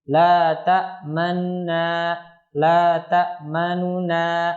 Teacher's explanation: dibaca dengan memdhammahkan nun yang pertama dan merendahkan suaranya dengan cepat, yakni tidak dijelaskan dhammahnya, setengah harokat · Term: ar-raum